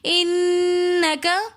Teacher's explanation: انکے کے اندر نون مشدد ہونے کی وجہ سے ہم غنہ کریں گے۔